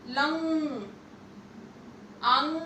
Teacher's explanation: इसका उच्चारण करने के समय हम लोग नाक का ज्यादा प्रयोग करते हैं। लंग, अंग। और ये विसर्ग, इसका उच्चारण ह से होता है, ह की तरह होता है।